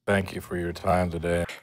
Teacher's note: The vowel in the word for is reduced, so it sounds more like fur.